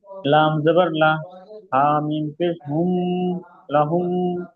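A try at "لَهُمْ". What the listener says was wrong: হামিম পেশ হুম বলে টান দিয়ে গুন্না করছেন, গুন্না হবে না, হামিম পেশ হুম।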